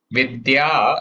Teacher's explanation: Vidya again there is a soft sound, should not become vidya. Even though in English, a lot of us may write it as vidhya, there is no Mahaprana sound here. Vidya, appropriate spelling according to the way it should be pronounced is vidya.